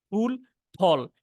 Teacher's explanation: বাংলাটার ফ এর উচ্চারণ হচ্ছে পুরাপুরি দুই ঠোঁট থেকে,